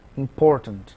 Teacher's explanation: A palavra important, o acento é no por